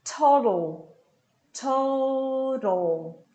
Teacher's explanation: O segundo T é um flap T.